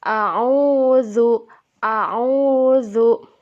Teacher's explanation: Matobi'i diayun, dibacanya diayun dan dipanjangkan 2 harokat